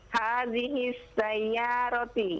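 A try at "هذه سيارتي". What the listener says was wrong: Jangan disambung dengan sin. Anda dengar hadhihis. Dipisah, jangan disambung.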